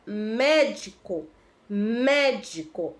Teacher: o mé, né, é a sílaba tônica e o mé é a antepenúltima sílaba, então ela é proparoxítona.